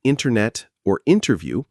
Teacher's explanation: A dropped T silent after N in internet or interview.